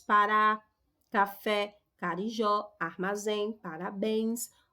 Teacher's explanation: Observe que todas essas palavras possuem a última sílaba tônica e todas elas terminam aí em A, E, O, em e ens. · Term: oxítonas